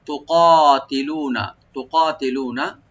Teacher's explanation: কাফটাকে এখানে আমরা ডিপ করে একালিফ টেনে পড়বো। লু একালিফ টানবেন, নুনে কোনো টান হবে না লাস্টে।